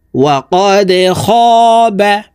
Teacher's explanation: এই দাল কলকলার হরফ নিচের দিকে ধাবিত করে ধাক্কা দিয়ে উচ্চারণ করতে হবে